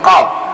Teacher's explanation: Qaf ini cara kita menyebutkan qaf itu tempatnya itu di pangkal tenggorokan. Pangkal tenggorokan bagian atas.